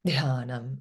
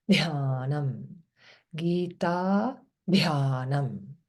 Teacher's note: And DH means aspirate, big breath.